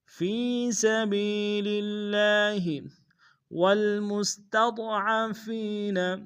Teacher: فی سبیل اللہ والمستضعفین، میم کو سین کے سامنے لانا ہے، سین کی سیٹی باریک ہوگی، تا کو ضاد کے سامنے آئیں گے، ضاد کو موٹا ادا کریں گے، فا کو یا کے سامنے آئیں گے، یہی مدہ ایک دائیں میں کھینچیں گے۔